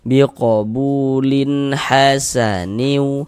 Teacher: tidak didengungkan, tidak dighunahkan, maka dibaca pendek saja